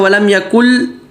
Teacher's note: لام کی مثال ولم یکن لہ، ولم یکن لہ اندادا لیضلوا، اب یہ نون ساکن ہے، اس کے بعد لام آ رہا ہے، ولم یکن، کل کے بعد لام آ رہا ہے، اب یہ نون نہیں پڑھا جا رہا، بالکل نون لام میں چلا گیا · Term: ادغام کامل بلا غنہ